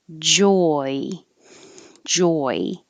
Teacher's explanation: your lips start rounded and end unrounded and your tongue starts more flat or low in the mouth and rises to the e so after the j which you need to stop the airflow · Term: oi